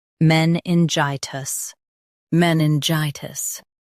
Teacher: Stress gi and keep tis soft.